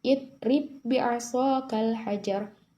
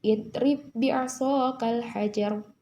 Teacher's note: tidak perlu menampakkan qalqalah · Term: idgham mutamasilain